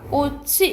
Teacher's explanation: 그런데 만약 뒤에 모음으로 시작하는 의미가 없는 이 조사가 왔어? 이럴 때는 디귿으로 안 표현하고 연음된다라는 거. 옆으로 옮겨가. 꽃이 이렇게 발음된다라는 거야.